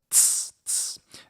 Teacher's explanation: And then we should talk about what an affricate is. So an affricate is where we combine an occlusive, a stop, plus a fricative. So t plus s. So we get the t and then the s.